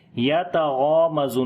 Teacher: غین کو اور الف دونوں کو موٹا پڑھیں گے